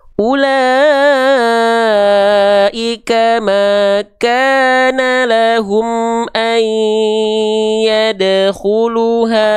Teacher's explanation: Idgham biguna idghamkan dileburkan, didengungkan juga selama 2 harokat